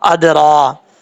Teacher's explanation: را کے اوپر کھڑا زبر را پر پڑھا جاتا ہے